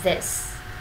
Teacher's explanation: Giọng mình hết sức là thấp thôi. Âm này là âm y ngắn, thế nên là mình đọc thật nhanh và lướt, giọng thấp.